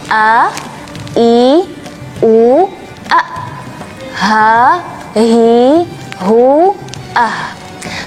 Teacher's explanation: huruf hamzah dan huruf ha dari makhraj tenggorokan bagian bawah